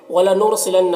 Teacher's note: رائے ساکنہ سے پہلے نون کے اوپر پیش ہے، را کو پر پڑھیں گا، نون مشدد غنہ ہوگا